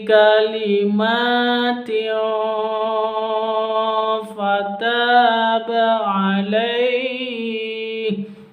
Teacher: Ada tanwin, hukum tanwin berjumpa dengan fa, bacaan ikhfa. Ikhfa itu samar disertai dengung.